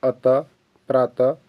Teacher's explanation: विसर्ग जिसका उच्चारण कंठ से ह के समान होता है